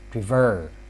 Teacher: When you see the word prefer, the stress is stressed at the second syllable.